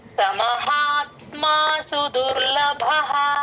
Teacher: భ కి మహాప్రాణం ఉంది గమనించండి